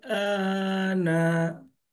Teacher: Ditahan 2 harokat karena bertasydid. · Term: bunyi mendengung